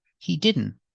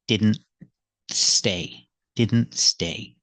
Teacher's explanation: the t is between consonants so we don't really hear the T he didn't it's really a stop te you put the tongue